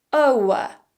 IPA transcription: oʊə